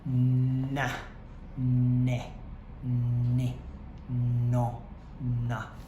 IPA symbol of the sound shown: n